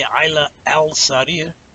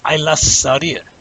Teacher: you have to pronounce that sin twice because it's a sun letter